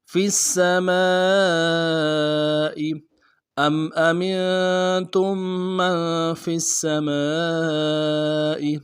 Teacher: من فی السماء فا کو سین کے ساتھ ملانا ہے، سین کے اوپر تشدید ہے، زور دیں گے، سین کی سیدھی باریک ہوگی، اگلے سین کو باریک ادا کرنا ہے۔ میم کے ساتھ الف مدہ ہے، الف مدہ کے اوپر مد اصلی ہے، 3 الف مدار میں کھینچیں گے